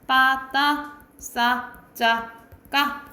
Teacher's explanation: 된소리는 단단하고 급한 소리, 강한 소리예요.